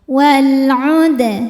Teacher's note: dibacanya dipantulkan dengan pantulan yang kecil · karena alif lam menghadapi huruf qamariah yaitu Ain maka lam sukun dibaca jelas walud ada hukum Qalqalah Sugra karena huruf Dal sukunnya sukun asli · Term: alif lam qamariah